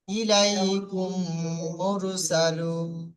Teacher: মিম সাকিনের পরে যদি মিম আসে, দেখেন মিম সাকিনের পরে মিম আসলে প্রথম মিমকে দ্বিতীয় মিমের সঙ্গে গুণনা করে পড়তে হবে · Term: মিম সাকিনের ইদগম